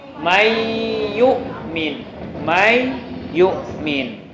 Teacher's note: Jadi huruf yang pertama nun, huruf yang kedua ya. Dimasukkan nun kepada ya.